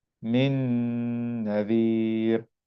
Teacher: So the letter after the noon here is this noon with fatha. So we're gonna apply a ghunnah sound for 2 counts. And the meaning of 2 counts is gonna be like stretching it for like 1 second. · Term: idgham with ghunnah